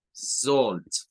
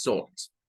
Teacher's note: el sonido como con un corte glotal, ¿verdad? El glottal stop, salt. El sonido que casi siempre aparece al lado de una L.